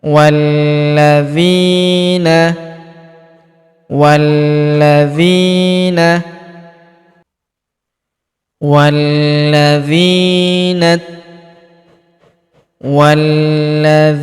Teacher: huruf wa langsung sambung masuk ke huruf lam yang berharakat tasydid langsung lompat masuk ke sini.